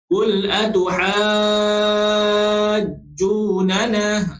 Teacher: Jadi bila jadi mat lazim kalimi musaqqal, dia kena baca dengan berapa harakat? Dengan kadar 6 harakat sahaja, tuan-tuan.